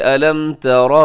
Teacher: را کی اوپر زبر ہے، را موٹی پڑھی جائے گی